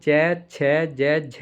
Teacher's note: स्पर्श संघर्षी क्या है श्वास घर्षण के साथ बाहर आती है